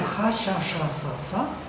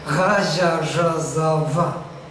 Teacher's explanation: Z and J are voiced fricatives